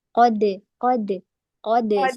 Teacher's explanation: qofnya dibuka tetapi ketika dalnya diqolqolahin tidak boleh dibuka karena nanti akan membentuk harakat